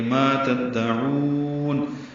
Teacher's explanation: تا دال سے ملائیں گے، عین کو لمبا کریں گے، وقف المد للسکون ہے، لمبا کریں گے.